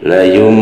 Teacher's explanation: Hukum bacanya itu iklab ya. Jadi nunnya berubah jadi huruf mim. Jadi layum gitu ya, itu iklab ya.